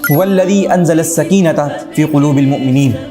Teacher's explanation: اب اس آیت مبارکہ میں لفظ انزلہ کے حمزہ کو ما قبل سے ملا کر نہیں بلکہ انزلہ کے حمزہ کا الگ سے تلفظ کیا جا رہا ہے، تو گویا کہ انزلہ کا حمزہ حمزہ قطعیہ کہلائے گا، اور وہ حمزہ جو زائد ہی نہ ہو یعنی حروف اصلیہ میں سے ہو وہ حمزہ اصلیہ کہلاتا ہے۔